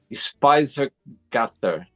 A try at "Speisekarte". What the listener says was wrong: Close, close. You added an R at the end. Speisekarte. Speise. Karte. Speisekarte.